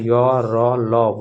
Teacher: इनका उच्चारण जीभ तालु दंत और ओष्ठ के परस्पर सटने से होता है। लेकिन ये कहीं भी पूर्ण स्पर्श पूरा टच नहीं करती है। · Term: अंत अस्त व्यंजन